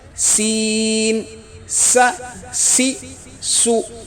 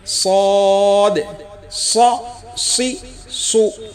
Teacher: سین کی آواز باریک ہوتی ہے، سین س سی سو، اور صاد کی آواز موٹی ہوتی ہے، صاد ص سی سو۔